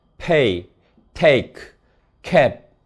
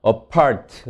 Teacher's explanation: voiceless stop들이 즉 프트크가 기음화된다. 강세 음절 초에서